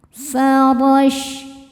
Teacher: shin punya sifat yang tidak punya lawan, namanya tafashi yang artinya menyebarkan angin di dalam mulut.